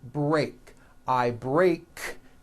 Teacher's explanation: break ends with an unvoiced k sound there's no voicing on that k